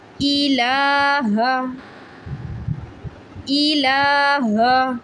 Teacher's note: کھڑا زبر 1 سیکنڈ کے لیے لمبا کیا جاتا ہے